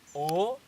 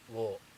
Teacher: Instead of saying O, they say Wo. Instead of saying E, they say Yi.